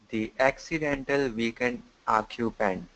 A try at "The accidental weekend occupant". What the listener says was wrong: Put these together a little bit more. The accidental weekend occupant.